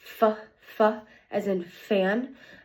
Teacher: The place of articulation for that sound is my teeth on my top row or on my bottom lip, and the manner of articulation is a fricative, a narrow space rubbing together